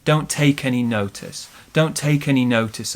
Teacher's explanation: any notice okay so this one here don't take any notice we stress take and then bigger stress on notice